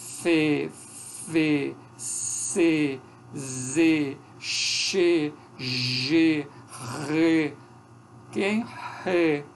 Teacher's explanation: São esses sons mais chiados, que a gente ouve uma fricção. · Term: sons constritivos